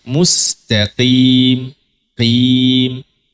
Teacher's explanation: Tafhim nisbi itu dia hurufnya tebal tapi dibaca tidak setebal ee biasanya atau tidak setebal yang seharusnya. · huruf qof bukan termasuk itbaq, maka tidak boleh dibaca mustaqoim. I tebal sih bagus ya, tapi jangan dia terlalu tebal karena dia bukan itbaq. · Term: tafkhim nisbi